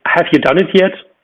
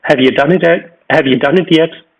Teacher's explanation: the vowel in the pronoun is very often reduced